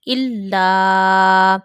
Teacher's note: when you read lam, you will put a stress on lam and you will take a minor pause. Then you will read zabar fatah on lam. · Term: tashdid